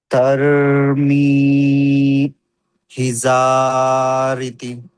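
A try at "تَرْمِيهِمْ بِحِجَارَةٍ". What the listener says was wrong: తర్మీహిం బిహిజారతిన్. బా వదిలిపెట్టేశారు మీరు, బా కస్రా బి. జా జీమ్ కరెక్ట్గా రావాలి. మీమ్ కొంచెం చదివారు మీరు, అలా చదవకుండా.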